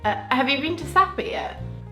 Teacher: English people tend to have a quick rise and then a little fall.